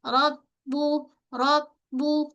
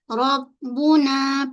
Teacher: pada ba sabdu kita kena hold sekejap pos sekejap